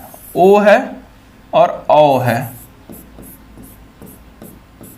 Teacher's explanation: कंठ से आपका उच्चारण अ होता है, ठीक है, और ओष्ठ से उच्चारण ऊ होता है। ठीक है, और इन दोनों के योग से क्या बनता है? तो इन दोनों के योग से ओ बनता है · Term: कंठ ओष्ठ